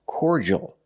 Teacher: Relax sound, corja, corja. And the last sound is the L, but it's the dark L, with the tongue in the back of the mouth.